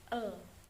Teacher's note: bunyi konsonan renggang lebar sampingan lateral bersuara apiko alveolar